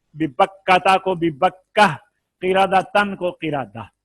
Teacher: گول تا بھی ساکن ہا سے بھی بدل جاتی ہے